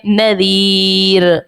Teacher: نون زبر نا ذا یا زیر ذی نذی رو دو پیش رن نذیرن وقف کی صورت میں نذیر. رو کو باریک پڑھیں گے کیونکہ رو ساکن سے پہلے یا ساکنہ ہے